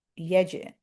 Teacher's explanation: we're going to do qalqala on the jim because jim is one of those 5 letters that we bounce